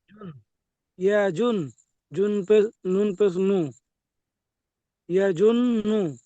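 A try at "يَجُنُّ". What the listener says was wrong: ইয়াজুন এখানে গণ্য করতে হবে, নুনের উপরে তাজদিদ এসছে, গণ্য করা ওয়াজিব। তাহলে ইয়া যাবার ইয়া জ নুন পেশ জুন নুন পেশ নু ইয়াজুন নু ইয়াজুন নু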